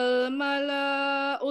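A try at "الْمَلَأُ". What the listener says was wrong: malanya malaul bukan malan.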